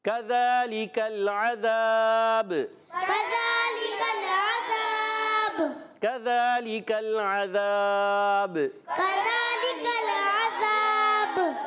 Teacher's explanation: اور ذال پر کھڑا زبر ہے، ایک الف کھینچنا ہے · کاف کا مخرج زبان کی جڑ اور تالو کا سخت حصہ